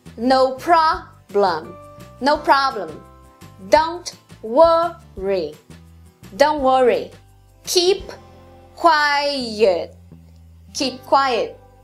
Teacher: O quinto padrão tem duas sequências fortes e uma fraca. Ta ta ta. No problem.